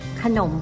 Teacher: คำไม่ประวิสรรชนีย์ดีจะไม่ปรากฏรูปสระอะแต่อ่านออกเสียงเหมือนมีสระอะอยู่ในคำเพียงจะอ่านออกเพียงแค่ครึ่งเสียงเท่านั้นค่ะ